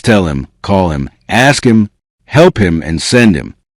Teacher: Notice how him may lose a strong H and connect with the previous word.